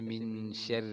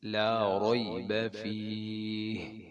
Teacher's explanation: پورے قرآن میں لا ریب را موٹی ہے